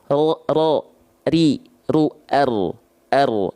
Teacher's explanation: Kalau R teman-teman rasa menuntut banyak getaran, Tapi kalau huruf ro tidak menuntut banyak getaran.